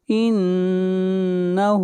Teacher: نون کے اوپر شد ہے، غنہ ہوگا، ہا کو کھینچ کر پڑھیں گے